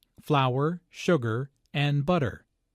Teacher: is a list so there are short pauses between each item notice also that each ingredient is stressed because this information is important · Notice that this is a list, so there are short pauses between each item.